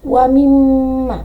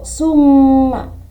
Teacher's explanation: Pada lafaz tersebut ada huruf mim bertasydid, harus ditekan 2 harokat.